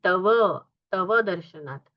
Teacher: तव में व का अर्ध उच्चारण नहीं है